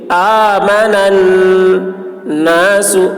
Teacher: نون مشدد ہے، نون میں غنہ ہوگا